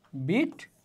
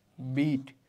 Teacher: বিআইটি যে বিট, এটা হচ্ছে হ্রস্বস্বর, আর বিইএটি বিট, এটা হচ্ছে দীর্ঘস্বর